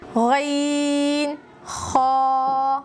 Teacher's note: یہ دونوں حرف بھی ایک ہی مخرج سے ادا ہوتے ہیں، غین خا، آخر حلق سے ادا ہوتے ہیں، یہ ہے آخر حلق، یہاں سے ادا ہوتے ہیں غین خا۔ · आखिर हलक से अदा होते हैं।